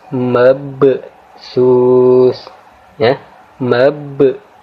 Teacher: Huruf ba mati di sini kita baca dengan cara menekan dan sedikit memantul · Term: qalqalah sughra